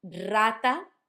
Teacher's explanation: Rata sounds like a rolled R, a strong one, because it's at the start of the letter or of the word